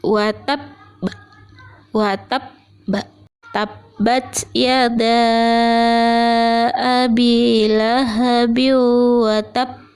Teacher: kita harus menyempurnakan terlebih dahulu tasdidnya, baru kemudian memantulkannya dengan setengah huruf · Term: qalqalah kubra yang bertasdid